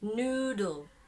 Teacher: So there is no vowel sound between D and L, though some other transcription would write a schwa in between there, in between D and L, but the most typical is no vowel sound.